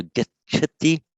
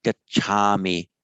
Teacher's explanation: Note, by the way, that for the first person, this a is always lengthened. It's gachami. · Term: long a